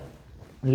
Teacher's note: ल वर्ण का उच्चारण करते समय हमारे मुख विवर से निकलने वाली वायु जिह्वा के दोनों बगल से निकल जाती है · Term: पार्श्विक व्यंजन